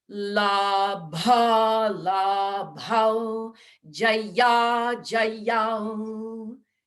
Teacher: So we can really exercise the ghosha mahaprana ishness of that second line.